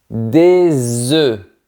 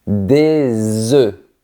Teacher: Le son est plus fermé et on ne prononce pas les deux lettres finales.